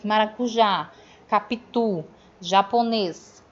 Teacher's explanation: Então, a gente vai ter aí as oxítonas, é a última sílaba tônica.